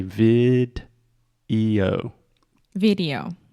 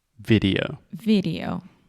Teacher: So first we have a hard D sound, vid, and then we really exaggerate the O at the end.